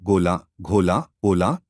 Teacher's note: ओ यह अर्ध संवृत पश्च स्वर है इसके उच्चारण में होठ का वृत्ताकार हो जाते हैं